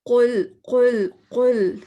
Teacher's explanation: قوف پڑھنا ہے تو ہم نے زبان پیچھے تالو میں لگائیں گے، اور جب ہم اس طرح پڑھیں گے زبان پڑھیں گے تو پھر کیا ہوگا کہ ہوا بھر جائے گی اور قوف اچھا سا ادا ہوگا.